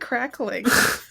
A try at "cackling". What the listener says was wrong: Why are they crackling? cackling. There's no R.